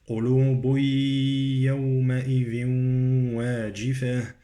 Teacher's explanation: قلوب عندي تنوين يدغم في الياء